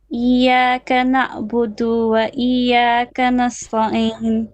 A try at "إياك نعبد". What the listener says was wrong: Okay, na'budu is a short vowel. Iyyaka na'budu. Do, that's it. Don't stretch it.